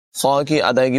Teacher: خا کی ادائیگی پر ہوگی، قاف کی ادائیگی بھی پر ہوگی۔